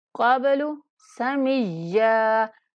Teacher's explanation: من نون پر اخفا کریں گے، قاف کو موٹا پڑھیں گے، با پر قلقلہ کریں گے، قبل سمیا، یا کو سختی سے پڑھتے ہوئے 1 الف کے برابر کھینچ کر پڑھا جائے گا وقف کی صورت میں بھی، من قبل سمیا.